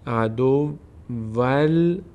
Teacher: به جای این نون باید لام تلفظ بشه